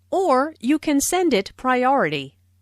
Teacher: Notice the stress on or, which emphasizes that there is another possibility.